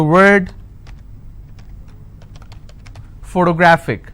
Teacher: since this ending with IC I will stress on gra